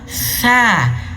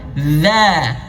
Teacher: Kalau huruf sa angin yang keluar, sa. Tapi kalau huruf zal suara yang keluar, za, suara yang keluar.